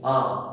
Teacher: এই যখন পুরো খুলতে হচ্ছে, মুখটাকে হাঁ করতে হচ্ছে বেশি, এবং এই যে হাঁ করা শুধু তাই নয়, অনেকটা সময় ধরে যেন বলতে হয় আ, অনেকটা সময় ধরে বলতে আ, যতই তুমি তাড়াতাড়ি বলো অনেকটা সময় ধরে বলতে হয়, অর্থাৎ মুখটা খুলে যায় এবং অনেকটা সময় ধরে বলতে হয় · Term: বিবৃত স্বর